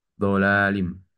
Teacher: Nah, di sini pada huruf lam, dola, di sini ada hukum matobi'i ya pada huruf la karena ada fathah yang berdiri di atas huruf lam. Nih, dolalim itu dibacanya dua harokat.